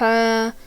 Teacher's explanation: ایک الف کی مقدار کھینچ کر پڑھیں گے، الف مدہ ہو رہی ہے